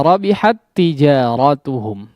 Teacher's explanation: seolah huruf yang pertama yang bertanda sukun itu sudah tidak ada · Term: Idgham Mutamatsilain